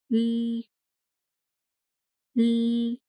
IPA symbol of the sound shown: l